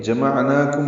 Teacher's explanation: عین ساکن پہ اظہار، نون پر کھڑا زبر دو حرکات لمبا ہے، میم ساکن پہ اظہار شفوی ہے